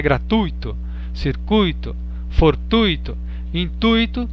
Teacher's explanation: atenção para si para as palavras gratuito circuito fortuito intuito que são paroxítonas é nós a gente costuma falar gratuito circuito né fortuito intuito